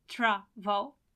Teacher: it has more than one syllable but at the same time the stress is on the first syllable